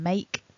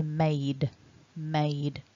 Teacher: when we move on to the past tense and past participle we need to have a voiced d sound so the vowel stays the same but we switch to a d so that goes from make to made made with a vibration